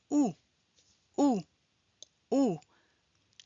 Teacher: lèvres arrondies et en avant, langue relevée et en arrière, vibration, voile relevé. C'est le son ou.